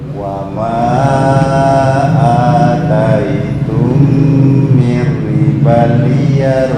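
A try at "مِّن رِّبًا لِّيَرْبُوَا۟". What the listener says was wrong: Nah, belum. Idghamnya yang di ribal belum masuk. Ribal liyar bukan riba liar. Itu idghamnya belum ada.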